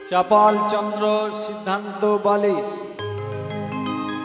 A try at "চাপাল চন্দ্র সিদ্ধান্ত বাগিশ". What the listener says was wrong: কি চাপাল চন্দ্র সিদ্ধান্ত বালিশ? বলছে চাপাল চন্দ্র সিদ্ধান্ত বালিশ। আরে বালিশ নয়, বালিশ নয়, বাগিশ। হ্যাঁ বাগিশ। চাপাল চন্দ্র সিদ্ধান্ত বাগিশ, ওই চাপাল গোপাল বলে যাকে আমরা চিনি।